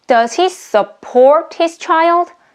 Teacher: here the support is a verb so here the stress falls on the second syllable